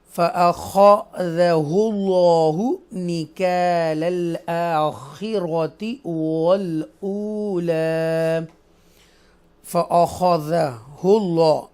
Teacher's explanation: اللہ کے نام کو تفخیم کے ساتھ بولڈ پڑھیں گے